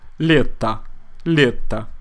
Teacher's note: because the letter o is unstressed, we pronounce it more like a.